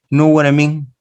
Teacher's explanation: you put the words together and it seems to be just one word